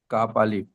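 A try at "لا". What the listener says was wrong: এটা হচ্ছে লাম আলিফ। লাম আলিফ। আলিফ, আমি কি বলেছি যে লামের টান সবসময় এদিকে থাকবে। কাফ হলে তাহলে মাথাটা, এই যে কাফ হলে কাফের মাথাটা হালকা এমন ভাবে বেঁকা থাকতো, বুঝতে পেরেছেন?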